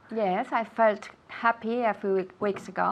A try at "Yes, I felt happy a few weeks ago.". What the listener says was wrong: Good. Feel, felt. Good pronunciation.